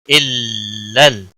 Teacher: تشدید والے حرف کو تھوڑا سختی کے ساتھ پڑھتے ہیں تاکہ تشدید ظاہر ہو